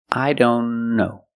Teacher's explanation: Link the N with the other N.